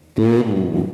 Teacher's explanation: ro sukun, sebelumnya ada huruf berharokat dhammah, nanti hukumnya tafhim tebal